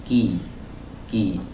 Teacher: huruf kaf ini pangkal lidahnya ditempelkan, ya, harus menempel, ya, teman-teman, ya, ditempelkan dengan langit-langit yang keras dan lunak. Jadi pertemuan antara langit-langit yang keras dan langit-langit yang lunak, bagian yang keras, bagian yang lunaknya itu kan ada pertemuannya di situ.